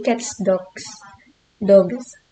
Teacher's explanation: seperti cats bunyinya ada S, tapi di dog bunyinya itu menjadi Z.